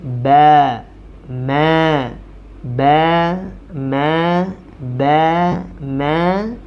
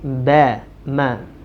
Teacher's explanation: Huruf ba dan juga huruf mim dibaca dengan bibir tertutup